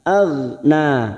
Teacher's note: 5 harokat kita samakan. Ma aghna huruf ghain sukun, jangan sampai memantul karena ini bukan qalqalah, kita tahan. Aghna, na alif kecil di atas atau fathah berdiri, matobi'i 2 harokat.